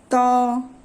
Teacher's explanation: जीभ को ऊपरी दांतों से टकराने से होता है।